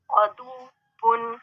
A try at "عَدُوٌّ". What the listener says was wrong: عدو، عدو، عدو نہیں کہیں گے، واو تشدید والا ہے تو اس پہ تھوڑی سی شدت پیدا کرتے ہوئے ہم نے اس کو ساکن کرنا ہے۔ اور کس طریقے سے؟